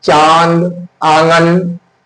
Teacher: मुंह और नाक दोनों से हवा निकलती है और उच्चारण में लघुता रहती है। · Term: अनुनासिक